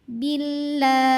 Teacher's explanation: enggak usah dibaca kita langsung tempel ke lam jalalah Bil dan ini tipis Kenapa karena kan sebelumnya kasrah jadi bunyinya la lidah kita terasa lebih ringan lebih nyantai